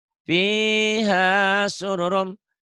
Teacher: Fiha sururun. Sururunnya jadi sururum. Idgham bigunnah.